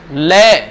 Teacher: इनमें से एक ऐसा व्यंजन है जिसे आप बोलोगे ना तो जीभ तो ऊपर जाएगी और बगलों से, जीभ के साइडों से हवा निकलेगी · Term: पार्श्व